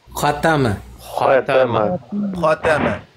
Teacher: ता और माँ इन दोनों ये तरकीक है और खा मुफखम है